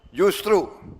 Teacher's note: Pada kata justru, kesalahan ini biasanya muncul karena pengaruh kebiasaan pengucapan lisan, di mana bunyi J sering terdengar melemah atau bergeser menjadi Y dalam percakapan sehari-hari